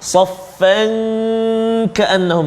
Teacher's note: tanwin atau huruf fa itu bertemu dengan kaf. Apa dia? Ikhfa hakiki, dengung 2 harakat.